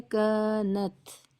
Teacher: اس کو تھوڑا کھینچ کر پڑھنا ہے، کانت، کیونکہ مد طبعی ہے یا حروف مدہ یا الف مدہ ہے، جو ہم نے تختی نمبر 4 میں پڑھا ہے، الف سے پہلے زبر ہو تو کھینچ کر پڑھیں، اگر کھینچ کر نہیں پڑھیں گے تو ایک حرف کم ہو جائے گا، جو مناسب نہیں ہے، بڑی غلطی ہے۔